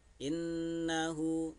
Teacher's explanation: Nun syiddah ini gunnah ditekan ya. Innahu ditekan atau didengungkan, innahu selama 2 harkat.